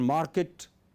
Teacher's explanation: In received pronunciation, market, you don't pronounce r, but 98% people in England pronounce r.